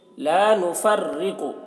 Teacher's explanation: را کو باریک پڑھیں گے کیونکہ رائے مشددہ کے نیچے زیر ہے۔ · قاف کو پر پڑھیں گے کیونکہ قاف حروف مستعلیہ میں سے ہے۔